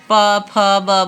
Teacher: ये सभी होठ से उच्चारण होंगे, होठ आपके जो है बंद होकर के खुलेंगे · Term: प वर्ग